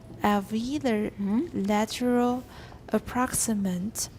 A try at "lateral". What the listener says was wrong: You don't need a vowel there. Just ooh. You're doing something different than I am. Ooh. Just put your tongue in the position for a T.